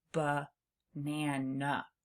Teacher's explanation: Sometimes vowels relax and can be kind of quiet like in the middle of the word banana.